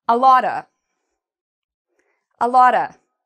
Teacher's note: And we also say a little bit quieter because it's not a stressed syllable. So we like to say it quieter than the rest of the expression.